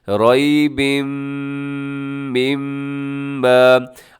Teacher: तनवीन के बाद मीम है, यहाँ पर इदगाम है, गुन्ने के साथ आपने पढ़ना है